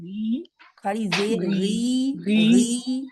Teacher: غی غی دو حرکات کے برابر لمبا کھینچے ہیں